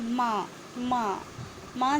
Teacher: ठीक है, अब एक और देखिए, माँ। माँ, माँ जब आप बोलेंगे तो इसमें नासिका का भी उपयोग करते हैं और आपके ओंठ भी टकराते हैं। इस वजह से माँ का जो उच्चारण स्थान है वो है ओष्ठ प्लस नासिका।